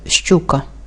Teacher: який незалежно від його позиції в слові буква ща позначає завжди два звуки ш і ч наприклад щука в цьому слові чотири букви і п'ять звуків наголос